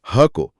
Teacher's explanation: ह को, क्योंकि ह इन सबसे पहले की आवाज है। ये वो ध्वनि है जो सीधे हमारे स्वर यंत्र यानी काकल से निकलती है, बिना जीभ या होठों की मदद के। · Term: काकल्य वर्ण